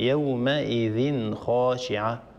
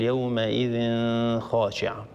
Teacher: انتبهي إلى قوله تعالى وجوه يومئذ خاشعة، يومئذ في آخرها تنوين، وهذا التنوين بعده حرف الخاء، والحكم هنا إظهار لأن الخاء من حروف الإظهار، من حروف أخي هاك علما حازه غير خاسر، فهنا نظهر التنوين عند الخاء يومئذ خاشعة، ولا نطول الغنة، لا نقول يومئذ خاشعة.